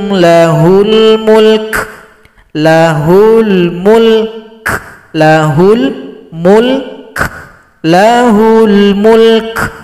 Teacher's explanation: berikan juga sifat huruf Kaf ada bunyi nafas atau bunyi angin disebut juga dengan sifat hamasalikumullahubukum lahul Mulk lahul Mulk lahul Mulk · Kalau berhenti di sini kaf disukunkan, sempurnakan huruf sukun sebelumnya, berikan juga sifat huruf kaf, ada bunyi nafas atau bunyi angin